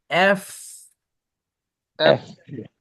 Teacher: নিচের দাঁত উপরের ঠোঁটের সাথে লেগে থাকবে আর বাতাস বের হইতে থাকবে বলার শেষের দিকে